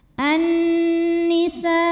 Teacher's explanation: Cara bacanya dengung, bunyi n-nya tahan sampai ada suara masuk hidung. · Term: gunnah musyaddadah